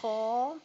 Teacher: خا موٹا پڑھیں گے لیکن ہونٹ گول نہیں کریں گے